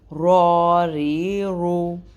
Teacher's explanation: را کے اوپر زبر ہے سو را کو موٹا کریں گے، را کے اوپر پیش ہے را کو موٹا کریں گے، اور را کے نیچے زیر ہے تو را کو باریک کریں گے